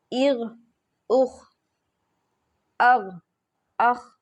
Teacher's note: حلق کے منہ کی جانب والے حصے سے ادا ہوتے ہیں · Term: غین اور خا